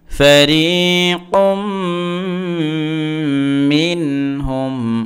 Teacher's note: ফারিকুম, মিম নুন জের মিন, এখানে মিন, এই যে নুন সাকিনের উচ্চারণটা স্পষ্ট হবে, কোনো ধরনের লম্বা হবে না, গুণনা হবে না, টান হবে না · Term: এজহার